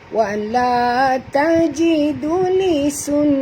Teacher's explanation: nun di sini wajib dengung, ada tasydid ya